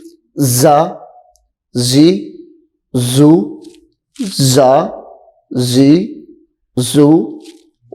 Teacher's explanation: زا، سیٹی کی آواز تھوڑی ظاہر ہو، چونکہ یہ سیٹی والے حروف میں سے ہے